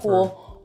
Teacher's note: an L turning into a vowel in a word like pool